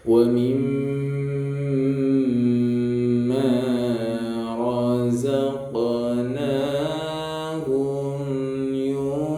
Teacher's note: Qaf berharokat sukun ya. Qalqalah sughra, kecil. Jadi bacanya tipis.